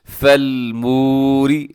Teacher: اس کو لمبا کرنا ہے کیونکہ واو سے پہلے پیش ہے، یہاں پہ واو مدہ ہے